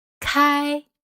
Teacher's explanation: The Chinese word Kai which means open also carries the first High tone